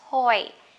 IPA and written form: tɔɪ (toy)